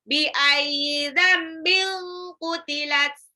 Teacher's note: Dzambil itu nun sukun ketemu ba, iklab ya. Jadi nunnya berubah menjadi mim.